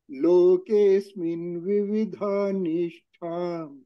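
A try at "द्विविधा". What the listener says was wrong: Not vividha, dvividha. Dvividha. What is balance is dvi. Dvividha.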